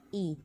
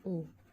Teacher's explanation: Berikutnya, menurut peranan bibir dapat dibedakan antara lain yang pertama vokal bundar dan yang kedua vokal tak bundar. Contoh dari suatu vokal tak bundar I, bila vokal tersebut dibundarkan menjadi U.